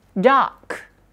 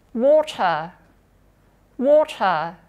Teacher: Kalau R-nya di akhir, R-nya nggak dibaca atau jadi non-rhotic. Oke, bedanya kalau di American tadi R-nya dibaca, tapi kalau di sini R-nya dia nggak dibaca atau jadi non-rhotic.